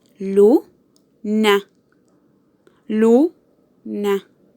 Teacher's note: Luna tiene su acento en la sílaba lu, por lo que tiene su acento en la penúltima sílaba.